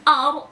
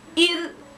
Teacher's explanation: ar dibaca tebal, ur dibaca tebal, ir dibaca tipis